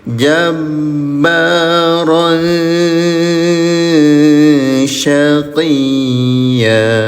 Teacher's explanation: Samarkan bunyi tanwinnya ya selama 2 harokat, namanya ikhfa